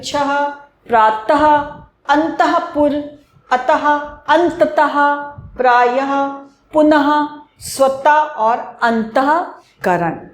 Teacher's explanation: जैसे हम कहते हैं ना, अह खाली, अह, तो ऐसे ही इसमें जब हम बोलेंगे तो उसके बाद में अह की आवाज आएगी।